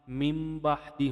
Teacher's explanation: جب ساکن نون یا تنوین کے بعد حرف با آئے تو اس نون کی آواز میم کی آواز ہو جاتی ہے اور اسے ظاہر کرنے کے لیے ایک چھوٹی سی میم لکھ دیتے ہیں۔